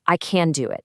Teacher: the word can is stressed for contrast or maybe emphasis